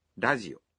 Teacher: the R in radio is pronounced somewhere between an R and an L sound